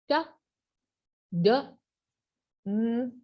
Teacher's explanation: our tongue is touching the alveolar ridge